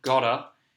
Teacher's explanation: We do have the soft D in British English for the T sound, gotta, but the vowel sound sounds quite different with the O.